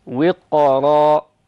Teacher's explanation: تقرأ بالتفخيم لأن الساكن الحائل بين الكسر والراء المنصوبة المنونة هو ساكن مفخم ، يعني من حروف الاستعلاء حرف القاف، فنقول وقرا، التفخيم وجها